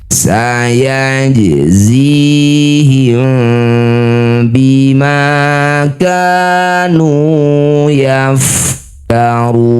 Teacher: Mim sukun bertemu ba disebut bacaan namanya ikhfa syafawi. Rapatkan bibir tapi rapatnya masih ada celah ya. Ikhfa samar rapatnya tidak betul-betul menempel bibir atas dan bawah. Jangan lupa dengung dua harakat.